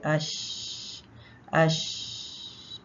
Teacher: तो यह मखर इसका खुला है इसका मखर बंद नहीं होता इसमें हवा भी आती है यानी सांस भी चलता है और आवाज भी चलती है सांस चलता है मतलब ये कि यहां पे वोकल कॉर्ड्स खुली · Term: शीन